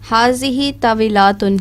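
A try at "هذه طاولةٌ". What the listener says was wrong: طاولاتن نہیں ہے, لام کے اوپر صرف زبر ہے. طاولتن.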